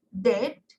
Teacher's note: Oral passage is blocked by pressing the tongue tips against the alveolar ridge. So it becomes alveolars.